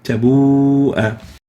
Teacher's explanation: In tabu'a, we have the waw followed by the hamza in a single word, and al-hukm, the rule is to extend it. It is mandatory to lengthen the waw for 4 to 5 units.